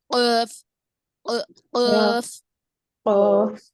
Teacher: جب ہم پانی کا گھونٹ لیتے ہیں تو جس طرح آواز آتی ہے قاف میں، اس طرح آواز آنی چاہیے